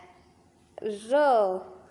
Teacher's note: और अब हम लोग लुंठित या प्रकंपित वर्ण जिसको बोलने में जीभ हमारी मुड़ जाए और थोड़ा सा घरघराहट की आवाज आए